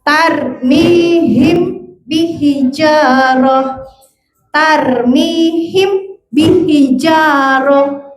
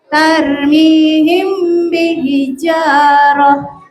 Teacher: Tarmihim langsung berasa getarnya di hidung · tarmihim mimnya agak ditahan dan didengung ke hidung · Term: ikhfa syafawi